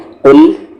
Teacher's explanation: یہ قاف ہیوی ہے اور یہ لام ہیوی نہیں ہے